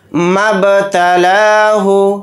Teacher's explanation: मब्तलाहु, मीम को बा साकिन के साथ मिलाकर पढ़ेंगे। बा के ऊपर जज़म है तो बा के अंदर क़लक़ला करेंगे, क्योंकि बा हुरूफ़ क़लक़ला में से एक हर्फ है।